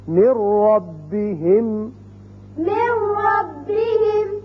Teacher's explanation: را کی مثال نون ساکن کے بعد اب نون نہیں پڑھا جائے گا، میم را سے ملے گا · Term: ادغام بغیر غنہ